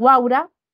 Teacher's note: la vocal abierta está entre dos vocales cerradas forma el triptongo